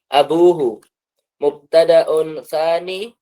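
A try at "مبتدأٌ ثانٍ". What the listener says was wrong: Tsanin. Kayak gitu, ya-nya dihapus, terus akhirannya bertanwin kayak gitu. Mubtada'un tsanin.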